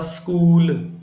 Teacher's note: आपने देखा समय अधिक लगा अर्थात बड़ा ऊ हो गया